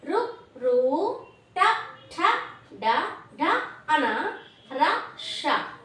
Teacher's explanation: తల నుండి నాలుక సహాయంతో పలకబడేటువంటి అక్షరాలను మూర్ధన్యాలు అని పిలుస్తారు